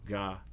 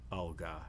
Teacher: are not produced in the same way after other phonemes so ga is not produced in the same place as alga it moves back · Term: co-articulation